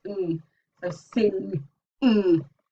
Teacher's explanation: that sound in sing is made by pushing the tongue up towards the back of the velum.